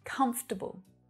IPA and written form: 'kʌmf təbl (Comfortable)